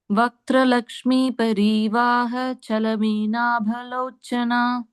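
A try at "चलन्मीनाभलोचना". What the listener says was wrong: Chalameenabha, that in has to be heard. Chalan, you can take a small pause there. Chalan Meenabhalochana. Try saying it a little slower because it's very long, right?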